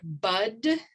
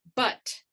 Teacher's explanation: the vowel length for bud is long and for but it's pretty short